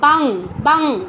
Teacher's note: অনুস্বারের নিজের উচ্চারণ হচ্ছে আমাদের ঙ হসন্তর মতো